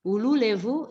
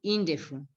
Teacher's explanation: Ululevu, it changes to indefu, where the levu, the L in levu changes to D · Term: hardening